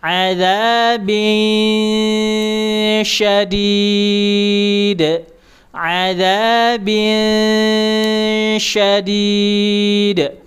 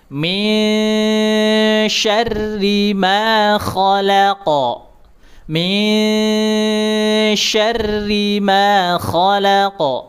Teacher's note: Diarahkan ke huruf sya. Lidah tengah dinaikkan ya.